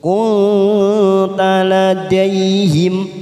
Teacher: Maryama wa ma kunta, ma fathah diikuti alif dua harokat, kunta nun sukun bertemu ta ikfa aqrab kita samarkan tiga ketuk bunyi nun sukun